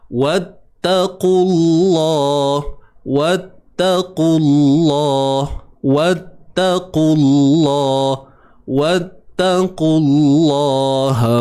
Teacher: lam di dalam kalimah Allah ni perlu ditebalkan. Sebabnya sebelum kalimah Allah terdapat huruf yang berbaris hadapan.